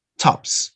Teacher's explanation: top finishes in a voiceless sound no vibration